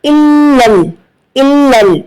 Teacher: دونوں لام پر تشدید ہے تو یہاں پر زبان کو سختی اور جماؤ دینا ہے